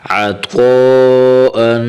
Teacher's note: یہاں پر مد بھی کرنا ہے، مد کو پڑھنے کے لیے جو مد ہے اسے 3 الف جتنا کھینچنا ہے